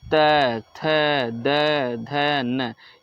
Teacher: त वर्ग हमारा होता है दंत, दंत व्यंजन होता है, ये दांत से बोले जाते हैं। जैसे त, थ, द, ध, न, ये आप बोल के देखिए तो इसमें दांत का प्रयोग हो रहा है, किसका, दांत का, इसीलिए इसको दंत व्यंजन कहा जाता है।